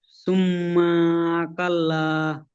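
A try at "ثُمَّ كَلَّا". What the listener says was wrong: সুম্মা কেন টানছেন? কেন টান হয়ে যাবে? সুম্মা কাল্লা। সুম্মা কাল্লা।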